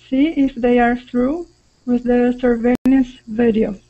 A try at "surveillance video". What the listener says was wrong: Good, good, with that short I sound.